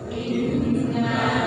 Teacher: Itu nun yang bertasydid itu 100% berada di batang hidung.